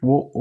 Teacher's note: ஓன்னு சொல்லும்போது, உதட்டை வந்து ஒரு மாதிரி குவிக்கிறோம். அதனால உதட்டை குவிக்கும் போது உருவாற எழுத்து.